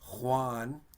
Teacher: a native speaker would probably add a little bit of a click and so it's kind of like you're clearing your throat so it's an h sound with the if you hear that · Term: the j